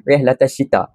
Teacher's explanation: Alif lam syamsiah ini perlu dibaca dalam keadaan alif lam tidak didengar dan tidak dibaca. · Asyita itu dalam perkataan lam itu tidak didengari, tapi diganti dengan huruf shin.